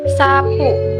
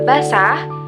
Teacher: Sapu bunyi es-nya terdengar jelas karena ada di awal. Tapi pada kata basah, bunyi es terdengar lebih lembut karena berada di tengah kata. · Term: alofon